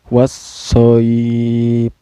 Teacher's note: Cara bacanya alif lamnya tidak dibaca, kan tetapi langsung memasukkan ke huruf sod ya. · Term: alif lam syamsiah